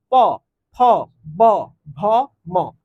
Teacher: তোমার দুইটা ঠোটের ব্যবহার হচ্ছে এ কারণে দুইটা ঠোট ছাড়া এই বর্ণ তুমি উচ্চারণ করতে পারবা না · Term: অষ্ঠ ধ্বনি